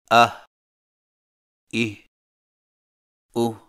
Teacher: ہا حلق سے بغیر رگڑ کھائے ادائیگی کے وقت زبان کی جڑ کو حلق کی طرف دبائے بغیر ادا کریں